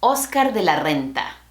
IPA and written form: os.ˈkaɾ ðe la ˈrɛ̃n̪.ta (Oscar de la Renta)